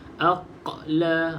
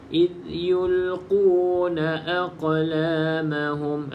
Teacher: qalqalah sughra yang detakannya sedikit saja